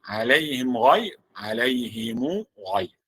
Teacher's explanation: بالنسبة لميم الجمع قالون له الصلة والسكون